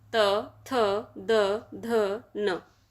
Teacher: टवर्ग, टवर्ग में आते हैं 5 वर्ण, ट, ठ, ड, ढ, अण, और ये बोले जाते हैं मूर्धा से, ये मूर्धन्य वर्ण है। तवर्ग, तवर्ग दंत वर्ग होते हैं, ये वर्ण बोले जाते हैं दांत से। त, थ, द, ध, न, तवर्ग दंत से।